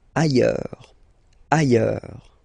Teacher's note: Ailleurs. Look, final S not pronounced, and then you've got this y sound